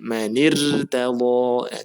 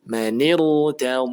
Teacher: karena hamzah wasal maka ra-nya dibaca tebal